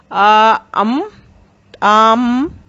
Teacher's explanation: जैसे हम अम कहते हैं तो आ और माँ की ध्वनि सुनाई देती है, और इनका मूल आ ही है। यानी आ बोलते बोलते हम अपना मुंह बंद करते हैं